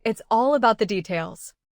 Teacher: Stress all and details, and keep the smaller words later. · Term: purposeful stress